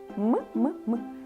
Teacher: давайте його промовимо м м Ви відчуваєте як ми його відправляємо це приголосний звук і ще й губний ми губками його вимовляємо